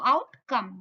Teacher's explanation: Stressed followed by stress. तो both of the syllable would be stressed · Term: स्पॉन्डी